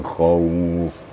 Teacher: khauf memang terasa iya terasa di tenggorok kita ada getaran khaufah bukan hanya sedikit tapi agak agak begitu tererasa gitu l